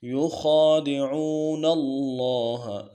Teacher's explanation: لفظ اللہ کے لام کو موٹا کرنا ہے، لفظ اللہ کا لفظ ہے جو ہے پورا، اس کو موٹا کرنا ہے۔